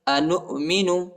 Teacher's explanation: الف پر چھوٹی مد ہے، اس کو تقریباً 2-3 سیکنڈ تک کھینچنا ہے